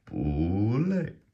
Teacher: because it's two fourth tones, the first one turns to a second tone